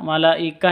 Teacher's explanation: terus bertemu dengan mad asli bertemu dengan Hamzah di sat kata malaikah itu satu kata artinya panjangnya harus lima ketuk Kenapa karena mad wajib muttasil la awalnya la dua ketuk ditambah